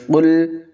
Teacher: قاف کو پر پڑھیں گے